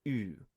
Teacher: In at least, let's say, classical Athens, so in the time of Socrates and Plato, it probably stands for U, the front vowel U that people may know from French or German